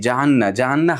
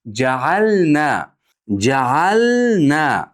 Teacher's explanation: Nadan keyin ikki harakat mihtoj cho'zamiz ja'anna bo'lib qolmasin. Chunki lam bilan nunni maxraji yaqin bir-biriga. Shuning uchun ko'pchilik inna ja'alna de ja'anna ja'anna xato.